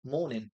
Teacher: So he pretends the G isn't even there.